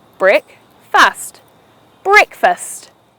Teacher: Two syllables, break-fust, where you put the stress on the first syllable causing it to sound as breakfast.